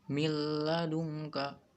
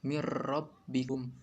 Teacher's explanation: idgham bilagunnah merupakan bacaan yang lebur tapi tidak dengung